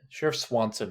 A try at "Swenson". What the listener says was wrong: No, Sheriff Swenson. It's with an E. Maybe they say it a certain way because here it's spelled Swenson.